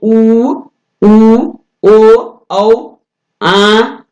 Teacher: समृद्ध स्वर का मतलब है जिन स्वरों के उच्चारण में ओंठ गोलाकार हो जाता है, यानी ओंठ जो है वो गोलाकार हो जाते हैं, उ, ओ, औ, आ, ये क्या है, ये समृद्ध।